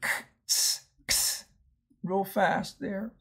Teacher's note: the X is actually the K and the S sound together. K, ts, ks, real fast there.